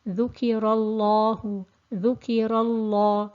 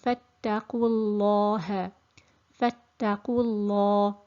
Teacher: So in general, the lam is a thin letter. The exception is in the name of Allah, when it's preceded by a fatha or a dhamma, then the lam becomes thick. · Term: thickness